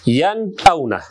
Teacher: Yan avna. Sükundu nun hamza menen geldi. Demek biz bu жерде sükundu nundu açık izhar kılıp okuyubuz.